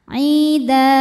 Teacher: Aida, jika berhenti di da hukumnya mad iwad, sebab ada harokat tanwin fathah yang diwakafkan. Cara bacanya panjang 2 harokat.